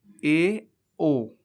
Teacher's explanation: इनके उच्चारण में मुख ज्यादा खुलता है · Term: अर्ध संवृत स्वर